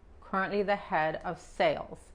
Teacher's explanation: La S al final de sales se pronuncia como la Z.